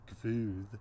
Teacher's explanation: the pronunciation that emerges later in Iceland, Gvuð, with that intrusive V there